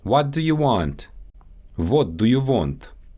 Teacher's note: Sometimes the W turns into a V. · Russian has no true English W sound, only a stronger, more forward V. So naturally, what becomes vot, and want becomes want. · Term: W and V sounds